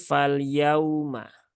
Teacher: wau sukun itu harusnya keluar bunyi u tetapi yang keluar justru bunyi vokal O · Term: Waw sukun